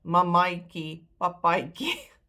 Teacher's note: That last A is pronounced I.